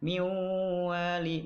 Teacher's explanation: Maka dibacanya miwali. Nun matinya tidak dibaca. Nah, langsung ke huruf wawu. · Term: idgham bigunah